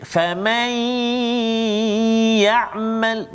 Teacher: Kalau ya, nun mati bertemu dengan ya, faman ya'mal, maksudnya dia tak terus pergi pada ya, kan? Dia ada dengung dia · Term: idgham naqis